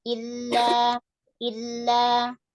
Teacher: Langsung tekan kasroh i, langsung ke lam.